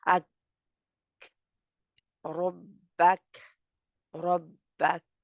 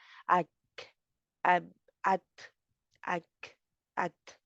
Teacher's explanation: शिद्दा के बाद इनके ऊपर हम्स होता है, जिसकी वजह से इनकी हवा जो है उसको बाहर आना ही होता है। तो आवाज रुक जाएगी और हवा बाहर आ जाएगी।